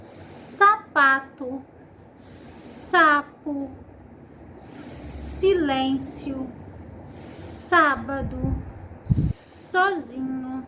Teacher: Então coloque a mão, uma das mãos aqui, encostado no pescoço, que você vai ver que aqui vai sentir, ver não sentir, que aqui ficam as cordas vocais. Então nessa pronúncia do S, que é o S no início de palavra, as cordas vocais não vibram. S.